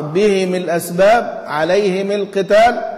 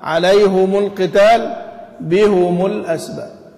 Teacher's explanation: ابو عمرو يكسر الاثنين، ها، وحمزه والكسائي يضمان الاثنين